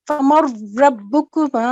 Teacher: جو نون یا تنوین ہو اس کا بالکل بھی ساؤنڈ نہیں آتی. تو یہ جہاں پہ نون ساکن جو ہے اس کی ساؤنڈ نہیں آئے گی. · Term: ادغام کامل